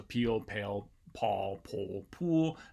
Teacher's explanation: with a t five sim uh start with a k sound they're all stop sounds at the beginning and they have different vowels right after them and then an l at the tail end